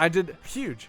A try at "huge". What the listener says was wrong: No, you did not. You don't know how to pronounce H's.